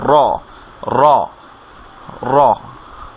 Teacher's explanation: উপরের তালুর সাথে লেগে আপনার সাউন্ড একটু ভাইব্রেশনের সাথে উচ্চারণ হবে র, র, র। এটা হচ্ছে মাখরাজ স্থান র।